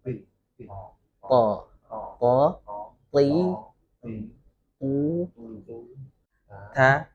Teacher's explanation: huruf to itu di mana? Di belakang gigi ya. Kemudian lidahnya itu menyentuh agak banyak langit-langit.